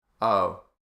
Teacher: So this O sound is more open and wider than the British and American dialects. So it's a bit more open mouth, a bit wider, a bit more relaxed. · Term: the O sound